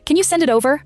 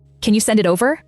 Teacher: And it over links into one piece, because a consonant met a vowel.